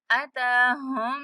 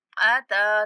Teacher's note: ता को खींचेंगे और हा को मुशद्दद मीम से मिलाते हुए मीम पर गुन्ना करना है। उसके बाद मीम को नून के साथ मिलाते हुए नून पर गुन्ना करना है।